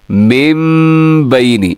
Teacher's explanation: नून साकिन और तनवीन के बाद जब भी बा आता है तो इक़लाब होता है, यानी फिर नून को हम मीम से बदल देते हैं और गुन्ना भी करते हैं साथ।